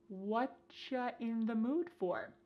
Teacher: Here the word you has been reduced to cha.